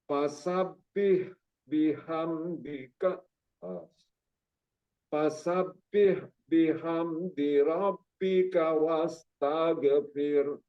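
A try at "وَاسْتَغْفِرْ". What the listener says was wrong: Nah, jadi ghinnya masih memantul. Jadi taghfir. Nah, taghfir.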